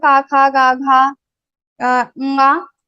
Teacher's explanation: all the these varnas will be pronounced from your kantha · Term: kantha varnas